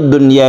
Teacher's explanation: suara nun-nya itu harus jelas dan tidak didengungkan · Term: izhar wajib